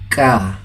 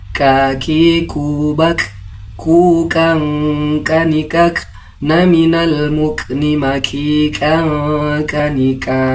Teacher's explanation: Huruf kaf makhrajul hurufnya berada pada bagian lidah paling dalam langit-langit mulut. Pengucapannya seperti huruf K dengan keluarnya nafas.